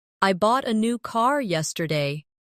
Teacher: The stressed words are bought, new, and car. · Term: sentence stress